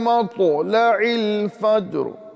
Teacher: مطلع میں طا آ رہا ہے اور اس کو ہمیں پر کر کے پڑھنا ہے۔ اگر پر نہیں کریں گے یہ تا میں بدل جائے گا اور مطلب اور معنی بھی چینج ہو جائے گا۔ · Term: طا کو پر کرنا